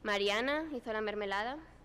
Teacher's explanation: in Spanish we have low plus delayed high star, so a rising pitch accent with a late peak